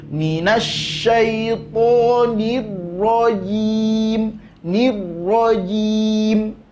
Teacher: getaran pada huruf ra tak boleh lebih dari sekali. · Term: ra tasydid